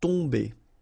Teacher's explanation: You don't pronounce the M at all, so it's really a nasal, so it goes in your nose.